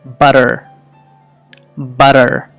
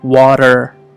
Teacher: అక్కడ డి లాగా మనకు వినిపిస్తున్నటువంటి ఆ శబ్దము ఎలా వచ్చింది అంటే నాలుక యొక్క ముందు భాగము అంటే టిప్ ఆ ఆల్వియోలర్ రిడ్జ్కి స్లైట్గా ట్యాప్ అవుతుంది. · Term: ఆల్వియోలర్ ట్యాప్ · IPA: ɾ